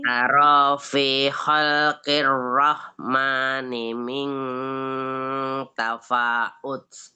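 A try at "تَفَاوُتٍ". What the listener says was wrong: tafawuds pakai itu. tafawuds pakai wow. nggak ada itu hamzahnya di situ. Itu pakai wow, atasnya doma. Nggak ada hamzahnya itu yang tafawuds.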